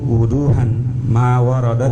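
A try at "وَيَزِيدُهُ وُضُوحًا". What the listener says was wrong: Saya kurang wawunya, berarti hilang di sini. Saya wawunya hilang. Wa yaziduhu wuduhan. Yang benar itu yang wuduhan. Saya tidak ada wawunya.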